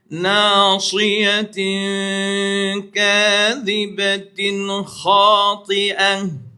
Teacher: Tin yang mula-mula dengung, tin yang kedua tu jangan dengung.